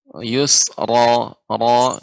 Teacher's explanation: Ra di sini harus lebih getarannya sedikit ya, misalnya yusra, ra dan juga tebal ya. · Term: huruf ra